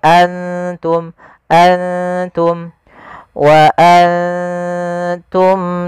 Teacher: ikhfa itu membaca antara izhar dan Idam maka Mak di sini nunnya kita samarkan ke huruf ta langsung seakan-akan kita melafalkan huruf ta Anta Antum Antum bukan Antum